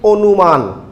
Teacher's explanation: অনুমান আদ্য অ এর পরে রস্যু উ রয়েছে, এই কারণে আদ্য অ এর উচ্চারণ ও হয়ে যাচ্ছে।